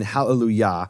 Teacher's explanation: the emphasis of that word is on the final syllable